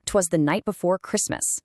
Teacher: For example, the anapest. This is two soft beats followed by a hard one. Da da dum. It's got this awesome galloping rhythm to it.